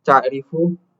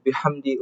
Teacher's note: kalau kalian menyebutin ain dan ha, kalian ngerasainnya di tengah. Enggak terlalu bawah dan enggak terlalu atas.